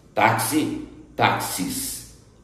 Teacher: Agudo porque o A tem som aberto, não é mesmo?